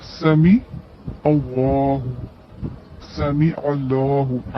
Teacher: عین کے ساتھ لام کو ملانا ہے